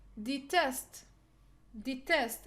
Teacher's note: we will put the stress on the second syllable because we have short e followed by consonant